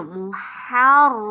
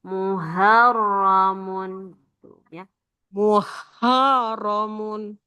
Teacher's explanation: ha tipis itu anginnya dulu yang keluar ha baru suaranya belakang